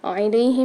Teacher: علیہم میں عین کو حلق کے درمیانی حصے سے ادا کریں گے